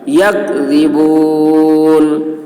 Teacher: کاف کی آواز باریک، ذال کی آواز باریک